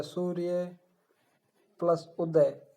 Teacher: ए और उ जुड़ करके ओ का उच्चारण कर रहे हैं, गुण संधि का उदाहरण है ये।